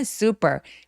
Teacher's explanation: 강세 뒤에 크트프 소리들은 미국인이라면 소리가 약간 된 소리를 내게 됩니다